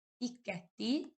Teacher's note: Tələffüzdə birinci Q samiti K-ya keçir. diqqətli deyə tələffüz edirik.